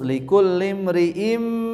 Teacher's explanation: Idgham ya, tanwin asalnya kan bunyi in, di depannya bertemu huruf mim, huruf idgham, maka suara tanwin dileburkan. Asalnya bunyi in jadi im.